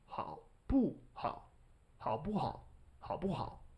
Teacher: Fifth tone is always very short, but whatever tone came before it influences how fifth tone sounds. So third tone is low, 好. Therefore, the fifth tone will be high in contrast.